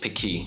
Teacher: It's called piqui, with the stress on the second syllable.